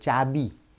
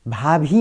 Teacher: महाप्राण ध्वनि शब्द के अंत में अल्प प्राण में बदल जाती है।